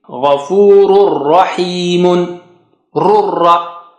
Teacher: So run ra, just tanween, the nun sound of tanween is gone. Ghafur, gha is high sounding.